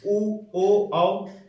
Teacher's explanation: उ बोलेंगे तो ओठ का सहारा लेते हुए ये जीभ की बाहरी हिस्सा का प्रयोग करेंगे, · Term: पश्च